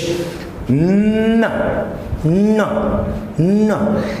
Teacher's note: The tip of our tongue should touch our alveolar, and then with the help of nose we say n.